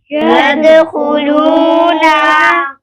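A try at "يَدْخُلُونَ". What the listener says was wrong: यदखुलून, नून को लंबा नहीं करेंगे। न, यदखुलून।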